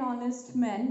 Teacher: we are skipping H, we are not pronouncing H, we are pronouncing from O.